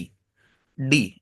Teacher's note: D, when you say D, so your tongue tip will go and touch your alveolar ridge. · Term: tongue tip gesture